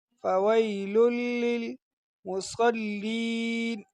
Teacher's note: تو اس کو پڑھیں گے فویل لل، تینوں لاموں کو ایک ساتھ ملانا ہے۔ فویل لل، فویل للمصلین، مصلین، صاد میں اس میں بھی سیٹی کی آواز نکالنی ہے۔